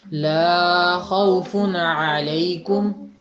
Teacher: لا کی آواز تھوڑی سی لمبی کر دی آپ نے، 1.5 گنا تقریباً۔